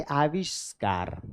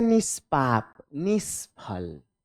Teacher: क ख और प फ ध्वनियों के पहले भी हमेशा आधा मूर्धन्य स लगता है